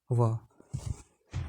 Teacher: दंत और होठ की सहायता से बोले जाने वाला वर्ण है व